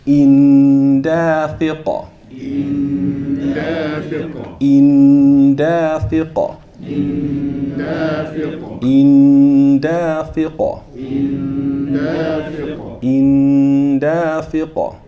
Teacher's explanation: you got to assimilate that tanween and hold it for 2 counts.